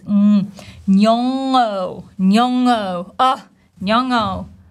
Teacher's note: So, nyo, nyo is the very first syllable. And then we have this ng, nasal sound, same as in the word doing, right? This ing ending, we should feel the vibration in our nose, nyong'o, nyong'o, oh, nyong'o.